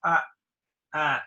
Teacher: Very open, tongue is back a little. Now the British ah, the tongue is forward a little bit. It's ah, ah.